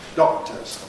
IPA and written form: ˈdɒk̚təz (doctors)